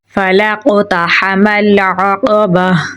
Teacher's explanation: है इसे साकिन कर देंगे तो यहाँ पर जज़म आ जाएगी, हा पे सांस थोड़ा जारी रख कर पढ़ा जाएगा · क़ाफ को पूरी यानी मोटा पढ़ेंगे, क़ाफ हरूफ कलकला में से है तो यहाँ पर हम कलकला करेंगे · है तो यहाँ पर हम कलकला करेंगे, ता को बारीक पढ़ेंगे, हा को गले के दरमियान वाले हिस्से से निकालेंगे , मीम को लाम के साथ मिलाएंगे क्योंकि लाम पे जज़म